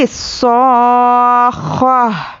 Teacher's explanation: پر جزم دیں گے تو یہ ہائی ساکنہ بن جائے گی تو یہاں پر پڑھنے میں لاسٹ میں ہا کی آواز آنی چاہیے